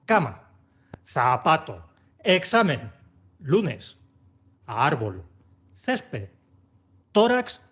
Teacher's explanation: Todas estas son llanas porque tienen el golpe de voz en la segunda sílaba contando desde el final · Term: palabras llanas